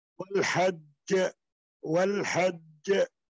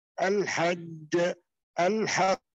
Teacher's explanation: ada qalqala kubra ashad yaitu ada qalqala yang besar dan kuat di dalam al-hajj dan al-haq gitu ya seperti itu pengucapannya karena ada syaddah di situ dan kemudian ada qalqalah.